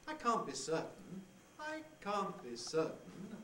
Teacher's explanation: the pre-head is the same level or a bit higher at the beginning of the head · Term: high prehead